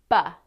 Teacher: This is a voiced sound because when you feel your throat, you will feel the vibration.